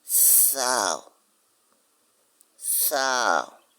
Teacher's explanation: pour appeler sao, vous mettez les dents sur la langue.